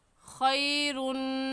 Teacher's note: جی خی کو ہم نہیں کھینچیں گے بلکہ نرمی سے ادا کریں گے۔ خیرن میں یا لین ہے، اس وجہ سے خیرن کو کھینچ کر نہیں پڑھیں گے بلکہ نرمی سے ادا کریں گے